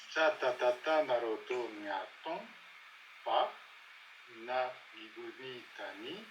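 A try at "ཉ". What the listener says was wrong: C'est pas na, c'est pas na, c'est pas na. Nya, nya, nya. C'est pas ya, nya, c'est nya.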